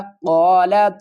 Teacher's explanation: یہاں پر قاف کو ہم پر پڑھیں گے، قاف الف زبر قا، ایک الف کی مقدار کھینچ کر پڑھیں گے، قا لام زبر لا، قال۔